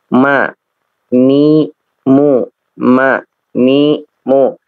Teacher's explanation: ditemani dengan gunah ketika keluarnya ya, minal khayshum, dari ini ya, ini khayshum namanya, dari apa namanya, apa namanya, janur apa rongga ya, rongga hidung ya, jadi keluar dari rongga hidung. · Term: gunnah